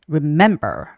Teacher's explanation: remember has the second syllable stress